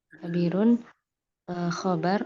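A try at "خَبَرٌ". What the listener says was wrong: Khobarun dong. Jangan disukun.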